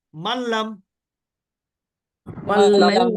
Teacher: নুন সাকিনের পরে লাম এখানে গুন্না নাই শুধু মিলাতে হবে